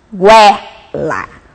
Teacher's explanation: o ditongo crescente, semivogal e vogal, ou seja, a fraca e depois a forte.